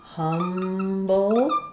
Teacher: we have the syllabic L with the B here at the end. Letter U says the sound, first syllable stress.